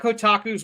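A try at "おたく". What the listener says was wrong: Oh, it's otaku, not kotaku. Otaku.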